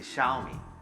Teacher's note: the second syllable, because it's a third tone and it's the last syllable, becomes a second tone, right? So it's basically Xiaomi.